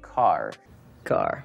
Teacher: вы чувствуете Как под конец слова Fire ваш язык немножко загибается